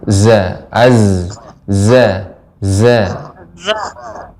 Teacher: Jadi zai ini mengalir, sifatnya juga dia mengalir dan dia tajam.